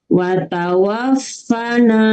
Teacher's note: Watawafa, fa harus ada hembusan ya.